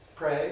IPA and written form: preɪ (pray)